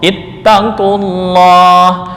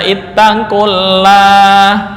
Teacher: Nggak boleh dibaca ittaqullah, karena lam didahului oleh dhammah, maka lam pada lafal Allah dibaca dengan tafkhim atau tebal